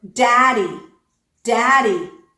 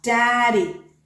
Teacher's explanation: The sound at the beginning of that word is a true D, D. The sound in the middle of that word is the alveolar flap